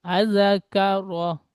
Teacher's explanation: রটি মুখ গোল করে উচ্চারণ করেন, রপুর হবে